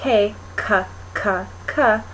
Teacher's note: it's the back of your tongue coming to the top of your mouth